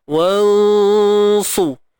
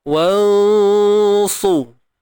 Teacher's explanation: nun mati bertemu sad, sad ni tebal, maka dengung pada ikhfa kita ni tadi juga tebal